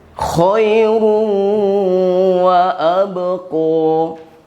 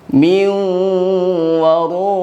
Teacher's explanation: huruf waw, ya, sama seperti huruf ya, masuk ke hidung. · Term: idgham ma'al gunnah